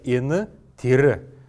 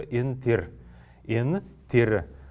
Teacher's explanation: в потоке речи часто неясный гласный вообще выпадает, и получается н-тир